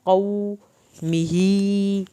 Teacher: कौमिही, कौफ को पुर करना है। कौमिही, ही को आप खींचेंगे क्योंकि खड़ी ज़ेर की वजह से।